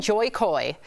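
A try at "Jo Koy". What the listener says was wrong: Joe Coy. It said Joy in the. Joy sounds like his mom.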